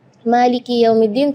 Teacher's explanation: Itu kadang-kadang ketinggalan karena pengen buru-buru saat membaca Al-Fatihah dalam sholat, jadi Maliki Yaumiddin kedengarannya sukun. Maka ketika kita membaca Maliki, kita perhatikan kaf kasrah di huruf kaf, harus kasrah yang sempurna